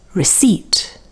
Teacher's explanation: Now here the P is silent, and you can see that the stress is on the second syllable.